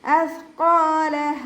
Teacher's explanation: ഇവിടെ സ ഉച്ചരിക്കുമ്പോൾ കുറച്ച് എയർ നമ്മുടെ പല്ലിൻ്റെ ഇടയിലൂടെ പുറത്തോട്ട് പോണ രീതിയിൽ വേണം ഉച്ചരിക്കാൻ · ഖാഫ് ഇസ്തിഅലാൻ്റെ ലെറ്ററാണ്, അപ്പോൾ നല്ലോണം ഉയർത്തിയിട്ട് ഉച്ചരിക്കുക. അലിഫ് മദ് കൂടെ വന്നിട്ടുണ്ട്, 2 കൗണ്ട് നീട്ടി കൊടുക്കുക.